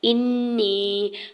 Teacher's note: حمزہ کی زیر کو نون مشدد کے ساتھ ملاتے ہوئے نون مشدد پہ غنہ کرنا ہے اور یا ساکن سے پہلے زیر ہے تو یا مدہ بھی ہو رہا ہے۔